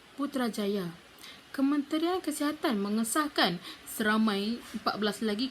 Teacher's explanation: berdasarkan teks berita yang telah saya bacakan sebentar tadi kita dapat lihat nada yang digunakan turun-naik turun-naik